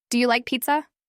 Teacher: your voice naturally rises toward the end of the sentence. You're not making a statement.